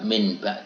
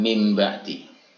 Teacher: ada nun tapi atau tanwin diikuti atau setelahnya adalah huruf ba maka nun mati atau tanwin itu harus kita bunyikan dengan huruf mim